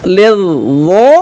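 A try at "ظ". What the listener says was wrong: Iya, enggak boleh pakai bibir. Dia huruf lidah.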